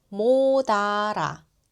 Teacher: In natural conversation, the S sound in 못 changes to a D sound and slides over to the next vowel.